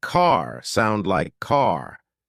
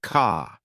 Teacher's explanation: British accent tends to soften the R, so car sounds more like ka.